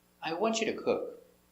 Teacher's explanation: The verb is the important word. So you stress the important word, want.